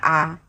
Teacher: मुख द्वार पूरा खुलता है, विवृत स्वर कहलाते हैं। जैसे हम जब आ का उच्चारण करेंगे तो हमारा मुंह जो है पूरा का पूरा खुल जाएगा